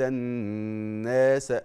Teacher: الناس دي الف وقبله مفتوح بنسميه ايه مد طبيعي قد ايه حركتين